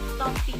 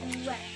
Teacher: fonem T jika dia berada di awal kata atau suku kata dilafalkan secara lepas. Pada kata topi, fonem T dilafalkan lepas.